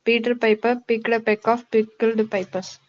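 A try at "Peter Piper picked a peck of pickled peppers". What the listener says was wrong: It's not pipers, it's peppers.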